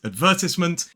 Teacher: the British English has the short I vowel sound, whereas in American English, it's I.